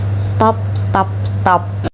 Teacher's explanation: huruf t di sini merupakan alveolar atau dental dan di depan huruf t terdapat huruf s huruf t di sini menjadi palatal